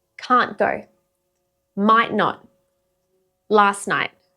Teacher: The t's just gone. The n takes over.